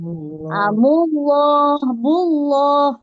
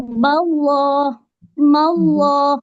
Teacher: huruf lam dia tebal bila dia jumpa kalimah Allah sebelumnya baris atas dan baris depan